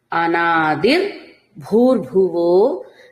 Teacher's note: నిసర్గ సకారం తీసుకోవాలి ఈ పదాన్ని అనాదిర్ భూర్ భూర్భువో ఇలా విడ తీసుకోండి రెండు భకారాలు కూడా మహాప్రాణ ఉచ్చారణే చేయవలసి ఉంటుంది